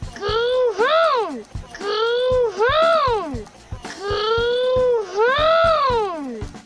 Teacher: But if you listen closely in English, we have the sound O. For us, it starts with O and then transitions to a second sound. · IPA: /oʊ/